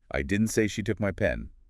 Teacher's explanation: by stressing took, you suggest maybe she did something else with the pen